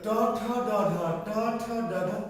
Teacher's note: না, একটু সামনের দিকে, একটু তালু হলো সোজা উপরে, আর ট ঠ ড একটু তালু থেকে একটু সামনে, দাঁতের গোড়ার পিছনে। দাঁতের গোড়া, আমাদের দাঁত যতটুকু দেখা যাচ্ছে এর নিচে কিন্তু কি আরো আছে। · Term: মূর্ধন্য